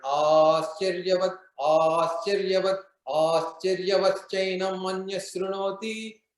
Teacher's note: So because these are 11 syllabi in each one, and clearly this one is starting with 3 different, the first 3 lines are all gurus, because there is a lot of prolongation.